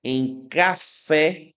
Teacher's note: A sílaba tônica é a última.